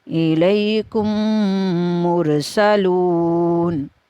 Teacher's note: یہاں پہ بھی دیکھیں یا لین کا قاعدہ جاری ہوا ہے اِلَيْكُمْ میں، اور پھر آگے ادغام شفوی کا، کیونکہ میم ساکن کے بعد دوسری میم آ گئی ہے تو ہم نے ادغام یہاں پہ کرنا ہے